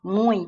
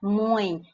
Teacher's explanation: isso aqui é um ditongo e é nasal